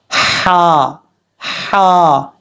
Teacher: گلے کے درمیان سے یہ ہا ادا ہوتا ہے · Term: ہا بریک